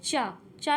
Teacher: चा जो है हमारा वो अल्प प्राण व्यंजन है